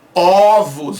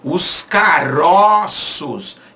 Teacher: Quando ela vai para o plural, essa vogal ela fica aberta. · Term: metafonia